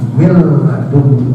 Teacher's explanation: Ya, seperti lafaz min dengan ladun, itu seakan-akan karena diidghamkan mil ladun, jadi suara nun matinya hilang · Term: idgham bila gunnah